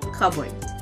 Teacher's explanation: this word literally means a board or table for cups and other things like plates and bowls, the P is silent